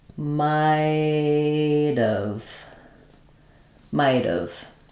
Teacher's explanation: my T linking to the schw becomes a flap